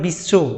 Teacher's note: আমরা যখন কোনো জায়গাতে যুক্ত ব করি তখন আমাদের ডাব্লু হয়